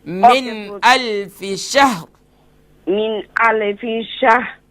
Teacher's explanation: من میں جو نون ہے نا، نون ساکن کے بعد حمزہ ہے، تو یہاں پر اظہار ہوگا، غنہ نہیں ہوگا، اخفا نہیں کریں گے.